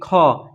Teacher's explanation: प्राण मतलब वायु। तो इनके उच्चारण में क्या होता है ना? ज्यादा वायु की आवश्यकता होती है। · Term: महाप्राण